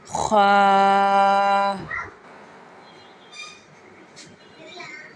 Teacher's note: حلق کے اوپر والے حصے سے خا ادا ہوگا